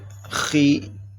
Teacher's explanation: یہ خا بھی حروف مستعلیہ میں سے ہے، یہ ہر حالت میں موٹا پڑا جائے گا